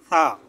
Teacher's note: সা বলার সময় জিহ্বাটা একটু বের করে উপরের দুই দাঁতের আগার সাথে লাগিয়ে নরম করে একটু বলবেন